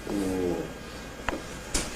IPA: ɫ